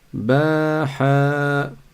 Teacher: Il y a 2 prolongations, une après le ba et une après le ha.